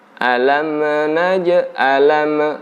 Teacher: tidak ada pantulan, tidak ada qalqalah di huruf mim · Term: mim yang bersukun